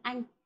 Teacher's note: Âm đầu không có. Vần, anh. Thanh là thanh ngang.